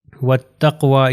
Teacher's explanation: اگلی اگزامپل میں چلتے ہیں، یہ ہو جائے گا وَالتَّقْوَى. یہ واو کے بعد الف اور لام میں یہ پروناؤنس نہیں ہوں گے، تو یہ تے سے مل جائے گا